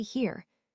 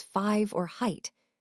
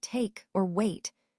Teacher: Now let's talk about dip thongs which are a special group of vowel sounds. These sounds are interesting because they change from one vowel sound to another within the same syllable.